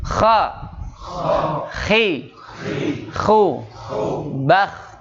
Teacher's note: lidahnya harus terangkat sehingga bunyinya akan menjadi bunyi yang tebal. Ciri karakter istilah adalah dibacanya bunyinya terdengar tebal.